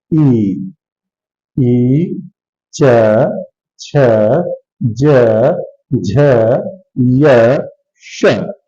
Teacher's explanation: जिह्वा तालु में टच कर रही है, इसलिए इनका उच्चारण स्थान है तालु। इनको हम तालव्य श कहते हैं।